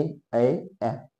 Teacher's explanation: कंठ तालव्य म्हणजे काय कंठाला लागतं टाळूला पण लागतं